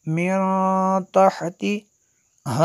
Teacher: من یہاں پہ غنہ ہوگا، نون ساکن کے بعد تا حروف اخفا میں سے ہے